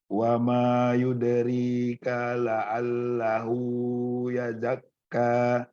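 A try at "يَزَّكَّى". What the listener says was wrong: Yazzakka, yaznya kurang ditekan. yazzakka kurang direm. Bukan yazakka tapi yazzakka. Masih kecepatan, bukan yazak tapi yazzakka. Yazzakka, bukan yazakka tapi yazzakka.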